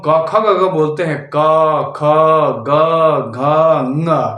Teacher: क वर्ग का उच्चारण कहां से होता है कंठ से